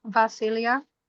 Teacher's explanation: Where is the stressor? On the iota at the end.